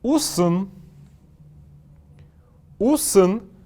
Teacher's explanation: после буквы «С» есть неясный звук один, который я произношу «усын», как будто бы буква «э»